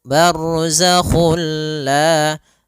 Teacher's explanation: Nah, idgham bila gunnah juga sendiri, itu idgham yang kita namakan juga idgham kamil, yaitu kita memasukkannya secara utuh, secara seluruhan kepada huruf lam, sehingga tidak menyisakan sedikit daripada bunyi huruf nunnya